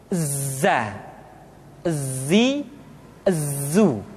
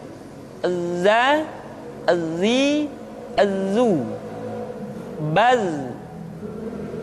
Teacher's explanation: Tetapi ingat, huruf za bersifat al-jahr. Artinya, ketika kita mengucapkan huruf za, suara kita mengalir, akan tetapi nafas tidak boleh mengalir. Contoh yang salah seperti ini, za, zi, zu.